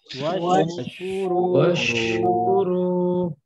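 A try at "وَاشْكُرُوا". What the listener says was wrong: Jangan terputus ya. Jangan washkuru, tapi alirkan. Washkuru.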